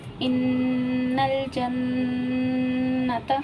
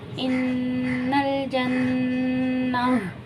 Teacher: گول تا وقت کی صورت میں گول ہاں میں بدل جاتا ہے